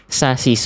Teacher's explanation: Pelafalannya shad itu ujung lidah ke gigi seri bawah. Atau persisnya gini lah, shod itu kayak huruf S.